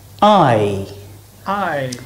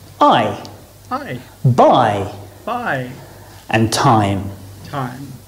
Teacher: we're going from the bottom row to the top so our mouth start wide open and closes as we say the sound i i starting on the r and finishing on the e